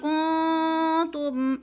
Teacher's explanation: نون ساکن کے بعد آگے تا حروف اخفا میں سے ہے تو ادھر اخفا کرنا ہے یعنی غنہ کرنا ہے